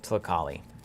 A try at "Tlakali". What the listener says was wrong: Tlakali? get the L in there.